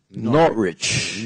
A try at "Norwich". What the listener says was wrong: The W is not pronounced.